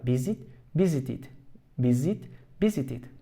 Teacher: el acento sigue en la primera sílaba